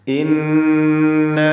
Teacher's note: ഇന്ന നൂൻ മുഷദ്ദദ മണിച്ചുകൊണ്ട് ഉച്ചരിക്കുക. ശ്രദ്ധ നൽകപ്പെട്ട നൂൻ 2 ഹറക്കത്തിൻ്റെ അളവിൽ ഗുന്ന നൽകണം.